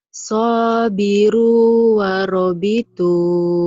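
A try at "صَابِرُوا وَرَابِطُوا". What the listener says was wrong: Rohnya panjang. Udah pinter tuh sekarang. Rohnya panjang.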